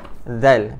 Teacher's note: Zal duduk di antara gigi atas dan bawah. Zal. Okey.